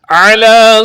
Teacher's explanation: علی کی عین کو درست پڑھیں گے، حلق کے درمیان والے حصے سے نکال کر